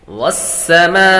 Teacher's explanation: مد کریں گے، حروف مدہ کے بعد حمزہ اسی کلمے میں آ رہا ہے تو مد متصل ہوگی